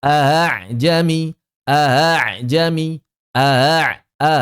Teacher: Jadi hamzahnya harus benar-benar keluar dari apa namanya? Dari pita suara. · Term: hamzah musahalah